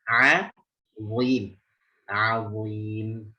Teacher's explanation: Ainnya tipis, istifal infitah